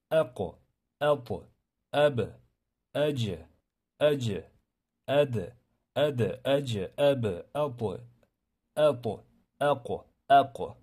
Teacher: Qalqala ana shunday sukunga uchraganda birinchi sukun qilasiz, ab deysizda, keyin portlatasiz.